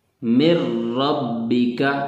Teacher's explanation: اب یہ مر ربک میں من ربک نون ساکن ہے تو وہاں پہ را کو مشدد پڑا ہے اور نون کو بیچ میں سے گرا دیا ہے، نون کو را سے بدل دیا